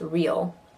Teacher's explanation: Because of the L, it kind of has a diphthong effect. Real can sound like 2 syllables.